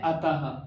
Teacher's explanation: अतः में जो ये विसर्ग है इसे हम ह की तरह उच्चारण करते हैं, क्योंकि इसका उच्चारण स्थान भी बताया गया है कंठ से, अकुह विसर्जनीय नाम कंठ।